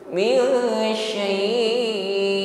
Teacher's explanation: Min syai' ditutup dengan huruf hamzah ya. Makhraj tertutup dengan sempurna. Suara bersih, tidak ada yang mengalir sebagaimana huruf ain.